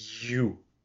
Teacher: parece que eu tô chiando um pouco com o palato aqui